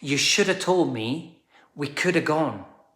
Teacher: The auxiliary word have often reduces to a. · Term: schwa